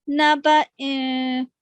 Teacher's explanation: और गुन्ना का असूल है, यानी इसके तलफ़्फ़ुज़ में नून की आवाज सिर्फ पैदा करें. नून को पढ़ना है, पूरा पढ़ना है, लेकिन नाक से पढ़ना है आपने